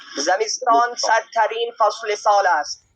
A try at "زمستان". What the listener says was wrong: یہ زمست نہیں ہے، زمستان ہے. زمستان کہتے ہیں ہم موسم سرما کو. زمستان دیکھیں آپ زے اور مین دونوں کے نیچے زیر ہے. زمستان سرتر از با سرترین یعنی سرترین فصل سال است.